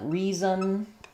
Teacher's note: It's not it's not like son reson reason. I'm really just going from the z to the n sound and the n functions as the full syllable. First syllable re um or yeah first syllable re and second syllable zen no vowel the n just functions as the vowel. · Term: Syllabic N